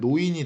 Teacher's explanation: 니은. 니은이 탈락했는데 이 경우는 리을이 니은으로 바뀌었죠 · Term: 두음 법칙